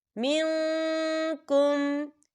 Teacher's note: والذین یتوفون منکم، یا دیکھیں من، یہاں نون ساکن ہے اور نون ساکن کے بعد کاف آ رہا ہے، اور کاف جو ہے اکفا کا ورڈ ہے، تو ہم یہاں اکفا کریں گے، نون ساکن کی آواز کو ناک میں چھپائیں گے